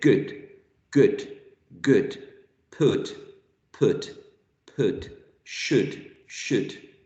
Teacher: It's still a back sound, but not so back as ooh, right? The tongue is a little bit towards the central area.